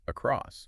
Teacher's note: the emphasis moves to the second syllable